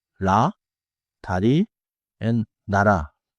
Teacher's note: use a quick forward tap, not a heavy English R